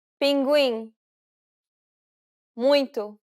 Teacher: since it's a nasal diphthong, you want to pronounce it through the nose